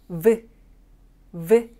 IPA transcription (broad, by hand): v